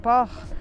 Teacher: port tem o R do francês e eu não falo o T